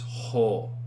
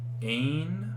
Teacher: You're exhaling through, and with the rough, it is ho. It's that really rough H sound.